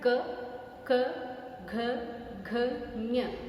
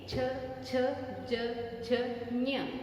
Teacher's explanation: क पीछे था, च उससे थोड़ा आगे है